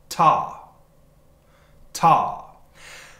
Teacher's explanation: when we say ta the tongue touches the back of the top of the teeth